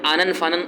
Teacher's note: یہ نون اور میم جب آ جائیں آخر میں تو اس میں غنہ آنی ہوتا ہے، آنن فانن غنہ ہوتا ہے کہ واضح ہونا چاہیے نون اور میم اچھی طرح.